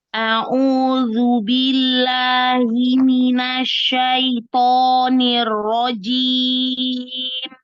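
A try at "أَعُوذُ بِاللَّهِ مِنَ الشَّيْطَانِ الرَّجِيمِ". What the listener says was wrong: B-nya masih tamtid sedikit.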